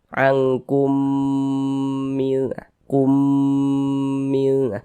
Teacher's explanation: Huruf mim sukun ini melebur ke huruf mim yang di depannya ini begitu. Ke huruf mim yang setelahnya ini ya. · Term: idgham mimi